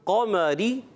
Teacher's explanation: قمری میں قاف کو پر رکھنا ہے، قمری، را باریک ہو جائے